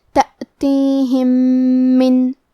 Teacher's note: تأتیہم. آخری میں میم ساکن ہے پھر حرف المیم آتا ہے کلمت من. یہاں ادغام متماثلین صغیر ہے تو ہم یہ حکم کو غنہ اور تشدید کے ساتھ ادا کریں گے